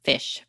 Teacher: This word begins and ends with stridents.